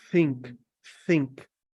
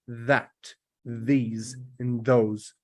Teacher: there's more air than that these and those because you need the air to make the sound